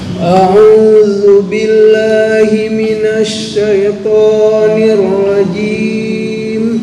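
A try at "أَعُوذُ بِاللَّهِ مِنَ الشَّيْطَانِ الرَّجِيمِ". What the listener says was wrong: Oke, udah lumayan mendekati.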